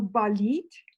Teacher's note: they both have stress on the final syllable of the stem